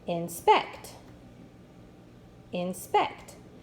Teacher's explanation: So if it doesn't sound right on the first syllable, we need to move the accent to the next syllable. Let me read it with the accent on the second syllable.